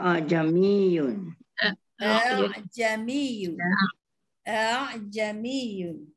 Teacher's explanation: Ikut eja dia jamiyun kan. Dia kena tashilkan sepatutnya dia dua. Panjangkan sikit saja dalam dua. Dia macam sebut tak sebut lah hamzah tu. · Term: bacaan tashil